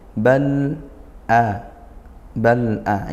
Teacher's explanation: ini al bertemu huruf hamzah izhar qamariyah, alnya dibaca jelas gitu ya, dibaca sukun jelas. Nah, sempurnakan sifat aslinya lam.